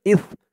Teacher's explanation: সার উচ্চারণটা একদম নরম পাতলা করতে হবে জিহ্বার মাথা উপরের দাঁতের মাথার সাথে লাগবে